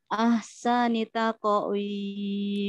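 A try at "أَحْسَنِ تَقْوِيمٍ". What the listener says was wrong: Nah, tidak taqwim, jadi tidak ada jeda sama sekali.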